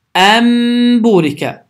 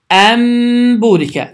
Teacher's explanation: Yəni N tamamilə M səsinə çevrilir. Səs burundan çıxır və iki saniyə miqdarında uzadılır.